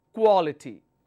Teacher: the third one from the end we'll take the stress